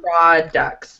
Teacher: the T is not really pronounced, right? It sounds like products.